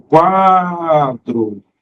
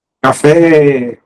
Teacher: Quando eu falo o quadro, o quá se prolonga, não é assim? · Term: sílaba tônica